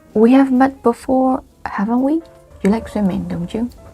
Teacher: You use this rising intonation because you are not sure. You want to check the information with pure intention.